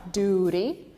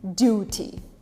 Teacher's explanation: in america we replace t with an r duty you almost say it with an r in british it stays as a t